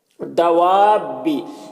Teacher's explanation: یہاں پر جو مد ہے یہ مد لازم ہے، مد لازم کو 3 سے 4 الف کے برابر کھینچ کر پڑھتے ہیں۔